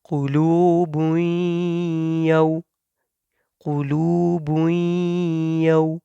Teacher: here we have tanween, and right after that we have ya. When we will read, we will do idgham. So ya, fatha, waw, sukun, yaw.